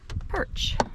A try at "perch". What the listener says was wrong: Perch. Not porch, but perch.